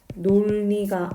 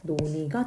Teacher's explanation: 니은으로 시작하는 어미인 니가 오면은 놀니가 아니라 리을이 탈락해서 노니가 되는 거죠. 그래서 멀쩡히 있던 이 자음이 탈락한다고 해서 이 리을 탈락은 탈락 현상에 해당된다.